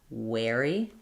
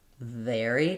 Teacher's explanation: for the W sound, you need rounded lips. thinking of the W as being a quick slide between u and a wary versus vvary.